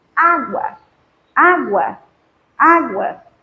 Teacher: você perceberá que o U é mais fraquinho do que o A nesta sua pronúncia desta sílaba, né? Então, por isso é chamado de semivogal, porque é mais fraca, ok? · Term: crescente, ditongo crescente